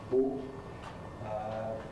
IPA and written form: bo (beau)